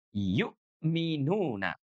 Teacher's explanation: Huruf hamzahnya ini dibaca dengan cara menjeda suara kita.